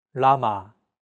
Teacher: an L but there isn't an equivalent sound in English llama this sound is actually somewhere between an l and an R sound when pronouncing this sound your tongue should strike the gum Ridge